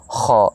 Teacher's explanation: اس کو ادنیٰ حلق کہتے ہیں، یعنی منہ حلق کا جو ہے وہ حصہ جو منہ کی طرف ہے خا۔ لیکن اس کی ادائیگی میں زبان کو تھوڑا سا اوپر اٹھائیں گے کیونکہ یہ موٹے حروف میں سے ہے، اور حرف کو موٹا کرنے کا طریقہ یہ ہے کہ اس کی ادائیگی کے وقت زبان تھوڑی سی، زبان کے جو جڑ کا والا حصہ ہے وہ تھوڑا سا اوپر کو اٹھے، بالکل لگے نہیں لیکن تھوڑا سا اوپر کو اٹھے، تو اس سے حرف خا ادا ہوگا۔